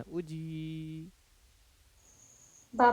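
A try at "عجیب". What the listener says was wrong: आवाज दब नहीं रहा है, हिज्जे में दबाना है, उजी। जीम या जेर जी।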